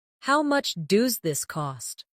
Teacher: In natural conversation, does this often sounds like do this?